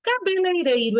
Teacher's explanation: eu tenho o lei e o rei como ditongo